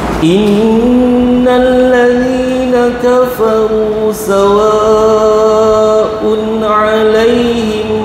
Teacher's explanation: nun dan mim ada tanda sabdu, wajib dengung 2 harakat, panjang sikit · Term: wajibul gunnah